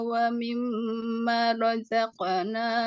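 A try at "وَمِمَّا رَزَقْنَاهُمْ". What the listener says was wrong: Banyak panjang. Wa mimma, banyak panjang Bu. Jangan dipendekin.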